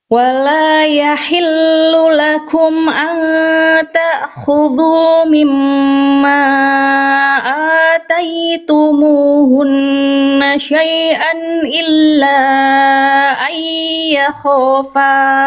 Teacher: illa sudah empat harakat lima harakat namanya mad jaiz munfasil ya